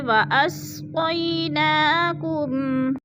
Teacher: وَأَسْقَيْ یا ساکن سے پہلے قوف کے اوپر زبر ہے تو یالین کو ہم نے لمبا بھی نہیں کرنا اور جھٹکا بھی نہیں دینا